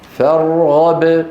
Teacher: فارغب الباء شديدة زمنها قصير